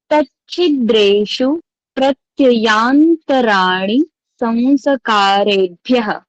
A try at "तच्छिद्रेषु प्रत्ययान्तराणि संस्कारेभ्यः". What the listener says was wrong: सही बोल रहे हैं आप।